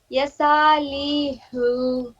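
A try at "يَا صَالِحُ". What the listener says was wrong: یہاں پہ منہ کھولیے، یا صالح.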